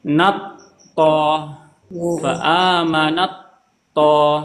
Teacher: Terdengar seperti ta dan to itu digabungkan, diidghamkan. · aja perhatikan ada ta bertemu dengan th ta bertemu dengan th itu juga diidegomkan dijadikan satu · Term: idgham mutajanisain, idgam mutajanisin